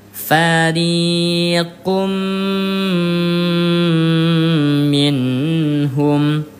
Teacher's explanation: tasdidnya didengungkan dua harakat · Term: gunah